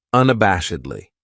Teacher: This adverb has 5 syllables, and the stress is on that third syllable, that bash, unabashedly. That second syllable has that schwa, that sound